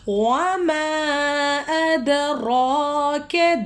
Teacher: دال کے اوپر سکون آ گیا ہے، ہم اس کو ہلا کر پڑھیں گے